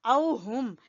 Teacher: ہا کو ادا کریں گے اقصا حلق سے